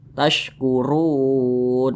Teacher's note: maka huruf ro-nya ini dibaca tebal.